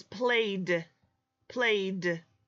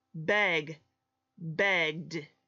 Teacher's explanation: We only just say the sound d at the end. There is no extra syllable.